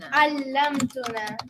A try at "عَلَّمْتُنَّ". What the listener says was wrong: علمتن. So not tuna, not tuna. Tunna.